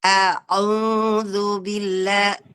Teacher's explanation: Jadi hurufnya bukan huruf hidung, tetapi huruf tengah tenggorokan.